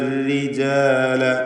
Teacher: റായിന് കസ്റാണ്, തർക്കീഖാണ്, നേർപ്പിച്ച് റായിന് രി എന്ന് ഉച്ചരിക്കുന്നു.